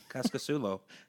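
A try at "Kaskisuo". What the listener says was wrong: Cascasuo. There's no L.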